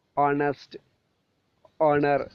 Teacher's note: ഹി is Silent in words like അവർ ഹോണസ്റ്റ് ഹോണർ